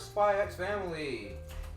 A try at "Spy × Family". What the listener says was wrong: Spy Family, you don't pronounce the X.